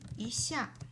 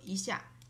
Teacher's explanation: It changed to rising tone because 下 is falling tone.